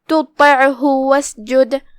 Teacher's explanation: کلمت واسجد میں یہاں جو کہ الف ہے، دھیان رہے یہ حمزۃ وصل ہے، حمزۃ وصل لکھا جاتا ہے، پڑھا نہیں جاتا